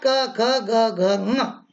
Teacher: क वर्ग और साथ में ह और विसर्ग, तो अ क वर्ग ह और विसर्ग, इनका उच्चारण स्थान कंठ है।